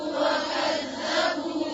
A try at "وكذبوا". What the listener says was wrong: وكذبوا ذال کو نرمی سے اور با کے اوپر سے پیش نہیں، آگے واو بھی ہے، ٹھیک ہے، اس کو بھی پڑھیں گے. کذبوا کذبوا نہیں، کذبوا کذبوا ذال.